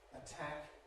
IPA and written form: əˈtʰæk (attack)